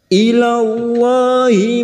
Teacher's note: Lam jalalah yang didahului fathah kita baca tafkim.